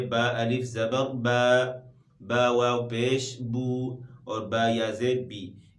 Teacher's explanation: اور ان کو ایک الف کی مقدار کھینچ کر پڑھا جاتا ہے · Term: حروف مدہ